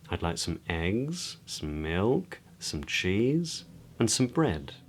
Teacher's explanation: So each item on the list is spoken with a rising intonation, eggs, milk, cheese, but then we would use a falling intonation, a downward intonation, which I'll talk more about in a moment, on bread to indicate that we've finished.